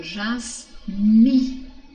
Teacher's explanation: O nei aqui é a mesma coisa do cheiro, né? Então, do mi é mais forte e do nei é mais fraco